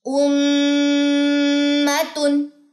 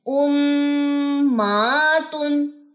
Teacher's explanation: میم کی زبر لمبی نہیں کرنی